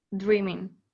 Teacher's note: Finalmente, en pocas palabras, le sacan la G.